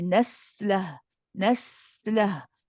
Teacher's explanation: You stay on the sin, let it run for a bit, then go to the lam. We have here a mad waw. · The sin we've seen before is a rakhawa letter. It's one of the ones that we let run.